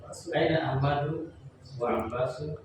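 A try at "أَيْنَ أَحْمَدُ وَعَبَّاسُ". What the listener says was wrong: Kenapa Abbasu? Hukum Ahmad dengan Abbas berbeda hukumnya. Maksudnya dari segi harokatnya berbeda.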